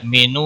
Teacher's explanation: یو حمزہ ساکن کو تھوڑا جھٹکے کے ساتھ پڑھنا ہے مینو واو مدہ ہے 1 الف کے برابر کھینچ کر پڑھیں گے نون وقف کی صورت میں ساکن پڑھا جائے گا 3 سے